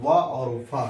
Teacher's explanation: निचला ओंठ और ऊपरी दांत एक दूसरे को टच करता है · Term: दंत्योष्ठ